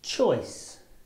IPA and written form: tʆɔɪs (choice)